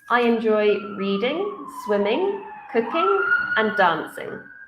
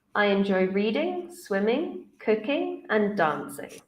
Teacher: for lists we use a rising intonation until the final um item on your list